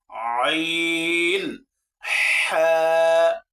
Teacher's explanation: কণ্ঠনালীর মধ্যকান হতে উচ্চারিত হয় দুইটি হরফ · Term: দ্বিতীয় নম্বর মাখরাজ